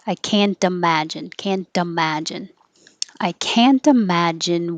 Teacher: the t and can't will change to a d because now it's between two voiced sounds so it will sound like can and the d will move